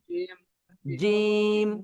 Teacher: জিম চেপে, জিহ্বার মাঝখানে বরাবর তার উপরের তালুর সাথে লাগিয়ে